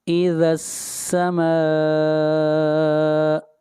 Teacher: ما کے اوپر مد متصل ہے، اس مد کو 3 الف کے برابر کھینچ کر پڑھیں گے